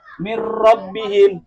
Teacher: Nun sukun atau tanwin yang depannya lam atau ro, maka huruf sebelum nun sukun atau huruf yang ditanwin masuk ke huruf yang depannya yaitu ro. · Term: idgham bila guna